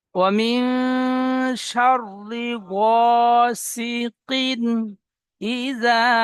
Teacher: তানবিনের পরে হরফে হালকির 6টি অক্ষরের মধ্যে হামজা এসেছে, তাই তানবিন বিনা গুণায় পড়তে হবে, একে ইজাহার বলে।